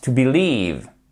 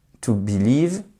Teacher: on entend mais de manière plus atténuée la première syllabe et on entend fortement la seconde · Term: l'accent tonique